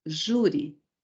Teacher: sílaba tônica, penúltima sílaba